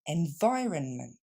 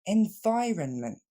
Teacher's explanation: L'accent tombe sur le son vi, la deuxième syllabe.